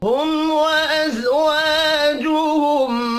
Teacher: मीम साकिन के बाद वाव है, इजहार शफ़ी होगा, गुन्ना नहीं होगा। व अज़वाजुहुम व अलिफ मद्दा है, इसको एक अलिफ के बराबर खींच कर पढ़ेंगे।